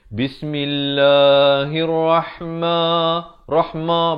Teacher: Dan di sini lafaz jalalah dibaca nipis 2 harakat.